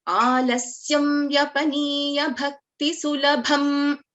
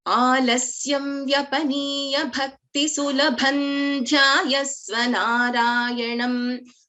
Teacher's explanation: I don't take a pause after this Bha, and in that case, this Anuswara gets replaced by the 5th letter of this Tavarga, because Dha comes under Tavarga.